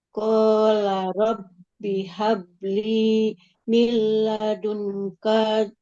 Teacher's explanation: bnya kasro enggak ada yanya ya. Enggak boleh panjang.